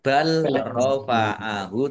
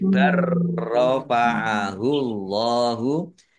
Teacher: ini lam sukun bertemu dengan huruf ro, ini namanya idgham mutajanisen